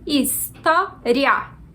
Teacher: Eu sou favorável a considerar um ditongo, porque a gente pronuncia história e não história, como se fossem duas sílabas separadas.